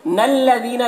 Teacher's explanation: दाल को बारीक पढ़ेंगे, या मद्दा है, एक अलिफ के बराबर खींचेंगे।